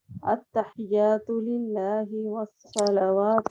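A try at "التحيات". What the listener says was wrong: اچھا ایک آپ کا ہا نہیں تھا, ہی ایچ ای ہی لکھ دینا. التحیات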